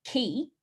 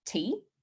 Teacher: Fronting is when a k or a g sound, which are sounds that are made at the back of the throat, is replaced with a t or a d sound, which are the sounds made with the front of the mouth. For example, instead of saying key, a child would say tea.